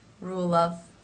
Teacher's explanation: And because that sound is unvoiced, it sometimes makes the sound before also unvoiced. So you will not hear a strong V sound, but more of a quick FV mix.